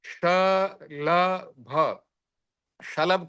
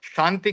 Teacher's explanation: शांति का श जो है ये तालव्य है तो इसका तालु से उच्चारण होता है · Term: तालव्य श